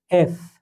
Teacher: উপরের দুই, মানে উপরের দাঁতগুলো নিচে ঠোঁটের সঙ্গে লাগবে